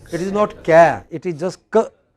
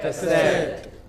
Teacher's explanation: Oh, it is cassette. The first syllable is hardly heard.